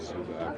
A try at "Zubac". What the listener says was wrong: Zubats. No, Zubats. Like a TS. Zubats.